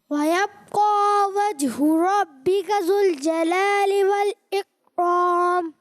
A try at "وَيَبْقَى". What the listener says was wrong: اچھی کوشش کی آپ نے، لیکن بیٹا یہاں با میں کلکلا ہوگا، ٹھیک ہے؟ وَيَبْقَى، ٹھیک ہے، وَيَبْقَى نہیں، وَيَبْقَى، ٹھیک ہے؟